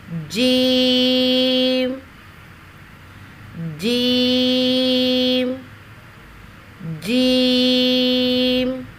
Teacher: زبان کے درمیان کو، یہ زبان کا درمیانی حصہ ہے، زبان کے درمیان کو تالو کے ساتھ سختی کے ساتھ لگا کر باریک آواز میں پڑھیں گے۔